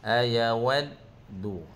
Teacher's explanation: Ayawaddu, waw dal tu seperti biasalah, dal di antara sifat dia adalah bersifat asyiddah. Asyiddah tu berhenti sat suara dan nafas seketika.